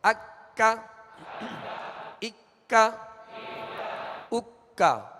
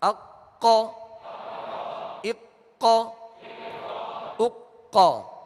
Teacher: یہ ڈنڈی والا کاف ہے لہذا اس کو باریک پڑھنا ہے، اور دو نقطے والے قاف کو پر یعنی موٹا پڑھنا ہے.